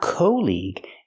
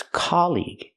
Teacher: It's the open a sound like hot and stop.